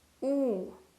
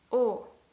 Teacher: Also remember that the U sound is longer than the O sound.